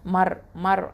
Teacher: ரா சுகுன் பெற்று அதுக்கு முன்னாடி உள்ள எழுத்து ஃபத்தா வர்றதுனால இது வந்து ஹெவியாக தஃப்ஹீமாக ஓதணும்